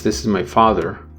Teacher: the highest pitch will occur on the first syllable of father and the lowest on the second syllable of the father the last syllable in the sentence this is my father now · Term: intonation